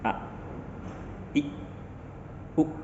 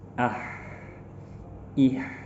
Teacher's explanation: Kalau hamzah suaranya berhenti. Kalau ha, suaranya berjalan.